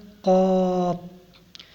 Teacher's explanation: قاف زبان کی جڑ اور تالو کے نرم حصہ سے ادا ہوتا ہے